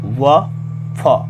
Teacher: दंतोष्ट निचले ओठ और ऊपर के दांतों से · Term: दंतोष्ठ